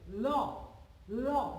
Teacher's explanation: দেখো ল, ল মানে জিহ্বা, আমাদের জিহ্বার অগ্রভাগটা দাঁতকে স্পর্শ করছে এবং দুপাশ দিয়ে হাওয়া নির্গত হচ্ছে। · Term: পার্শ্বিক ধ্বনি